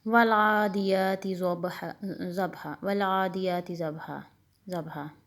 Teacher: نہ ضاد موٹا ہے نہ با کے اوپر قلقلہ ہے